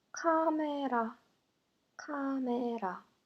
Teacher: R sound is replaced with the sound L.